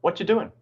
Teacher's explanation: the final g often disappears from ing at the end of words